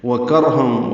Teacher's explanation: کر میں کاف باریک، را پر ہے کیونکہ اس سے پہلے کاف پر زبر آئی۔